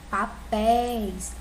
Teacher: é acentuada sim porque eu pés e ela é mais forte é a sílaba mais forte né que é a última sílaba da palavra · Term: sílaba tônica